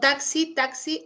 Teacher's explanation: Acá tendría la fusión de un fonema velar, el velar K, ¿ya? Velar K más un alveolar S